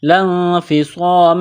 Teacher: نون ساکن کے بعد فا ہے، تو آواز ناک میں چھپائیں گے، غنہ کریں گے۔